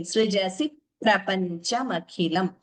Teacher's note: Here dvitvam, the p is doubling, srijasi prapanchamakhilam.